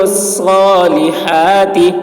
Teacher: صاد کی آواز سخت ہو رہی ہے، ہا حلق سے ادا کر رہے ہیں